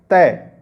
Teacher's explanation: जब आप तय बोलोगे तो देखना जो जीभ है वो दांतों से टकराती है